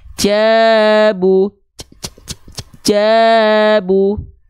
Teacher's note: Ini adalah pelafalan huruf jim yang kurang sempurna karena dia BBN, bocor becek nafas.